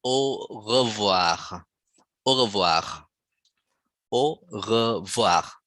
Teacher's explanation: So the R in French is at the back of your mouth. The tongue is rolled at the back of the mouth, not like English. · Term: R sound